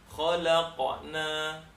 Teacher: yang betul adalah huruf qaf ketika sukun dia terpantulkan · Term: Qalqalah, qalqalah